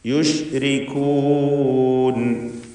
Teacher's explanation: റായിന് തർക്കീഖ് കൊടുക്കണം, കസ്റായതുകൊണ്ട്.